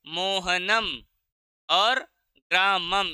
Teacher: अनुस्वार होता है, और उसका हम म उच्चारण करते हैं